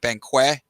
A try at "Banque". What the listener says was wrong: It's just bank. Like you don't pronounce like the QUE.